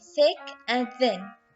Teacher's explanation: produced with the tongue tip on or near the inner surface of the upper teeth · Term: Interdental